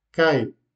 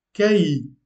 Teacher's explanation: sous la forme d'une diphtongue, on a kai. Puis sous la forme d'un hiatus, kai. Donc, comme vous pouvez vous en apercevoir, la prononciation est différente.